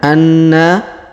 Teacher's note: huruf na kita tahan dan kita tekan Anna lalu kita panjangkan dua harakat karena di depannya terdapat Alif